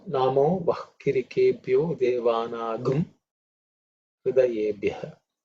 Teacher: the anuswara in certain situations takes on the sound gum or g because of the rules of how things are chanted in Yajurveda